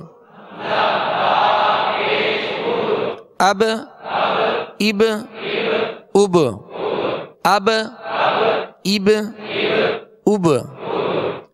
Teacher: با ساکن ہے اور با میں قلقلہ کریں گے، با حروف قلقلہ میں سے ہے۔